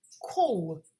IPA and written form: kɔːl (call)